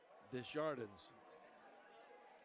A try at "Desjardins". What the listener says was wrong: I think it's Desjardins. I think the S is silent.